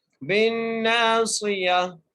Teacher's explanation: بِالنَّاصِيَةِ تو یا کے اوپر زبر ہے، تو یہ جو تا لکھی ہوئی ہے ہم وقف کی صورت میں تا کو ہا میں تبدیل کر کر اور ساکن کر دیں گے